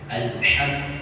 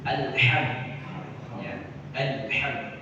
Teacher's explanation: Karena dia ha kecil, dia di tengah tawassut, di tengah tenggorokan kita.